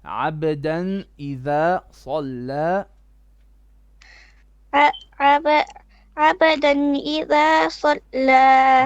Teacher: don't stretch the ghunna. There's no two bits of ghunna, only one. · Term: izhar